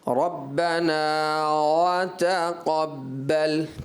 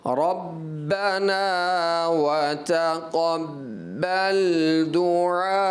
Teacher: واو کا جو مخرج ہے نا وہ دونوں ہونٹوں کی گولائی سے